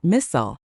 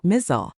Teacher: Some people say it with a sharp s like missile and some use a z sound like mizzle.